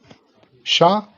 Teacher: शा ये तालव्य है, अघोष है और ये महाप्राण है।